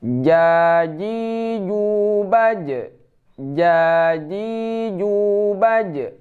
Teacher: Huruf ja. Cara membacanya di tengah lidah, tidak ada angin ya.